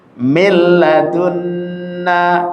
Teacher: lamnya jangan ditahan. Cukup ditasdid sekali langsung dilepas. · Nunnya dimasukkan ke lam, lamnya seakan-akan tasdid, nunnya seakan-akan tidak ada. Tapi ketika sudah masuk ke lam, lamnya jangan ditahan. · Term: idgham bi ghairi gunnah